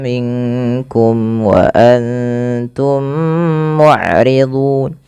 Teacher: jelaskan mimnya karena dia ishar syafawi